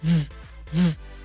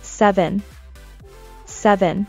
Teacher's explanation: V▁はFと同じ形ですよ。唇の粘膜の境目に上の歯を置いて